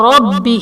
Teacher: ربہ میں با حرف قلقلہ مشدد ہے تو یہاں پر قلقلہ خوب جماؤ کے ساتھ ادا کریں گے